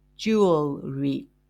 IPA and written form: ˈdʒuː.əl.ri (Jewelry)